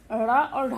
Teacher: ढ और ढा के जब उच्चारण हम जब करते हैं तो जो हमारी जीभ है वो ऊपर उठती है और झटके के साथ नीचे आती है।